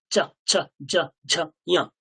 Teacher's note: যখনই আপনি চ ছ জ ঝ বলবেন, একটা দম যেন বাইরে বেরিয়ে যাওয়ার চেষ্টা করবে।